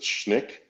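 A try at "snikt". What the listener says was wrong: Gotta pronounce the T.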